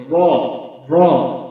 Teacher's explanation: প্রান্তভাকে স্পর্শ করতে হবে তাহলে র হরফটি উচ্চারণ হবে র র মুখ ভারী হবে মুখ গোল হবে র র এভাবে আমরা র হরফটি উচ্চারণ করবো ইনশাল্লাহ এরপর আসুন